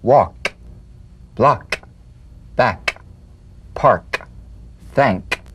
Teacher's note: Cognate, G. The unvoiced tongue back plosive consonant. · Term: K drum beat